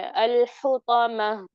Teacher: last में हा की भी आवाज आनी चाहिए